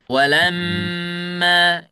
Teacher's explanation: Jadi dua harakat. Yang lebih boleh panjang adalah mimnya. Yang boleh ditekan itu mimnya bukan alifnya. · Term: ghunah